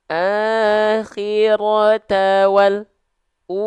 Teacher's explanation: jadi k menjadikan alternatifnya itu menjadi kesalahan yang kedua yaitu dengan memutus suara huruf lam sukunnya akhirnya bunyi suaranya terjeda